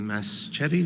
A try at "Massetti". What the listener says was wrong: Yeah, silent C.